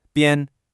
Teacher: The second character, Ben, is the first tone. Nice and high and flat, kind of like you're holding a single musical note.